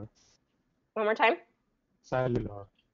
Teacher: But cellular is an S, so cell you, and this actually has an invisible Y in it. So cellular.